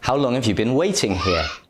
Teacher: the words how long and waiting are stressed